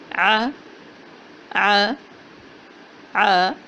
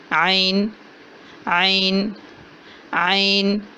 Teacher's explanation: وسط حلق سے، حلق کے درمیانی حصے سے، قدر نرم اور جھٹکے والی آواز ہے۔ عین کو ادا کرتے ہوئے اپنے گلے کو گھونٹنا نہیں ہے، بلا تکلف ادا کرنا ہے۔